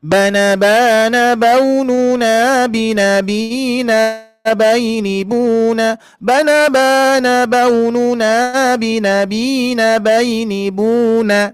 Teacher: Jadi awalnya ee datar dulu terus nanti ee yang keduanya turun ya untuk bunanya ya. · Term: irama yang kedua